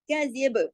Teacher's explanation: बा पे हमने पॉज कर दिया ना उसकी हरकत को, तो हम कलकला करेंगे यहाँ, क्योंकि बात जो है वो जज्म वाला लफ्ज बन जाएगा।